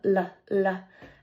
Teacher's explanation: the place of articulation is the ridge behind my top teeth